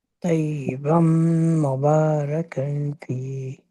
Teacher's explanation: بن تنوین کے بعد میم آتا ہے تو نون کی آواز میم میں مرج ہو جائے گی. طیبم، نون کی آواز نہ آئے.